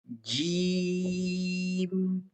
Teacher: ہوا اور آواز کا بہاؤ پہلے مکمل رکتا ہے پھر یکدم خارج ہوتا ہے۔ جیم پہلے رکا پھر خارج ہوتا ہے۔